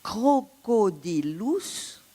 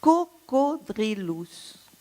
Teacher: le latin classique crocodilus avait subi en latin tardif la métathèse du R, donc déplacement, en devenant cocodrilus